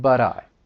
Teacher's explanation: But that T I'm going to pronounce it as a flap T. And then when I link it, it's going to sound like but I.